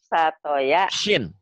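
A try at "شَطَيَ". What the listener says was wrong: Shin. Ini Syatoya. Shinnya kurang keluar. Syatoya.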